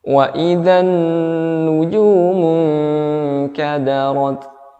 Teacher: Nun mati ketemu kaf dibaca dengan samar-samar, ya, beserta dengan dengung.